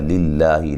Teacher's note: لفظ اللہ کو باریک پڑھیں گے، اس سے پہلے زیر ہے